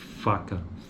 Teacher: Lábio dental, o articulador ativo é o lábio inferior e como articulador passivo temos os dentes incisivos superiores.